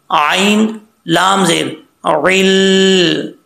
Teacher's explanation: आइन को पढ़ते हुए आपने हमजा की आवाज़ नहीं निकालनी, आइन लाम ज़ेर अल, ठीक है, थोड़ा सा लाम के ऊपर जोर दे के पढ़ना है अल।